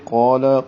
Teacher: قاف پر ہے موٹا پڑھیں گے، لام کو باریک کریں گے